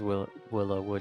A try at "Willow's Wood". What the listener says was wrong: Not Willow Wood, Willow's Wood. I'm saying that one is possessive and the other one wasn't possessive. This is a possessive Willow. Willow apostrophe S. Possessive.